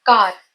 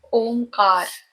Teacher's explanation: For Om, for the pronunciation of Om, you can refer to my tutorial video on the Saraswati chant, Krishna Das version. Kar, with sharp K with the long Hindi vowel A, Ka, followed by the soft Spanish R